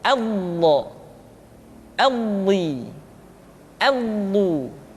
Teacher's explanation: Diucapkan dengan menyentuhkan dua sisi lidah kita dengan geraham-geraham atas.